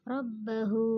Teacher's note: ro berharokat fathah disebut ro tafhim, dibaca tebal